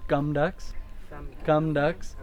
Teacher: it's not tucks with a bunch of air the K and the T are unaspirated